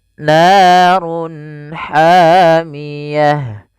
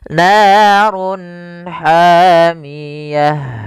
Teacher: Run ketemu ha, jelas kita namakan dengan izhar halqi. Suaranya harus dibaca dengan jelas. Izhar jelas, halq karena dia bertemu dengan huruf-huruf halq setelahnya, yaitu huruf ha, maka harus dibaca dengan jelas.